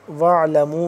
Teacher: وَاعْلَمُوا میم واو مد پیش مو 2 سے 3 الف کے برابر اس کو لمبا کریں گے